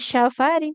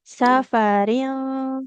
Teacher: huruf sin jangan jadi syin jangan syafaring tapi sa ya biasa.